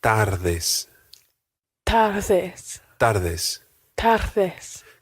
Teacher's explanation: And then it's followed by a th, a soft D sound. In Spanish, the D is very rarely a hard D like in English in the words dad or donut. It's a soft D, which sounds almost like the English word the.